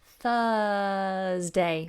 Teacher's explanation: my tongue does nothing it sticks out at the beginning of course 4 th and then nothing Thursday Thursday okay so thank you